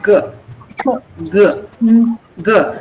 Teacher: So the back of the tongue goes up and touches the soft palate. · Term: velar consonant